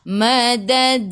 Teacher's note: Hujung lidah menyentuh belakang gigi atas dan juga gusi. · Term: huruf dal